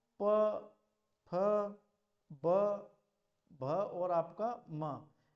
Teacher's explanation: ओष्ठ व्यंजन कौन से होते हैं। तो देखो ओष्ठ व्यंजन हमारे प, फ, ब, भ और आपका म, ये हमारे ओष्ठ व्यंजन की बात आते हैं।